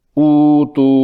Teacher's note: اسی طرح یہاں پہلی متحرک حمزہ مضموم ہے، اس پر پیش ہے، پیش کا موافق حرف مدہ واو ہے، اس لیے دوسری حمزہ کو واو میں تبدیل کرنے کے بعد اُتو کو اوتو پڑھیں گے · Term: ابدال